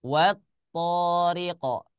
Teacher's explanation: tidak dibaca panjang walaupun di sini ada fathah bertemu dengan alif. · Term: idgham syamsiyah